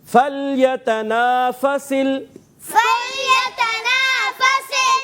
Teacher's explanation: لام کو ہلانا نہیں ہے, حرف قلقلہ سے نہیں ہے. حرف قلقلہ جو ہوتے ہیں ان میں آواز لوٹتی ہے.